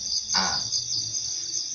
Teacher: hamzah itu huruf khalqi yang paling bawah atau pangkal daripada tenggorokan.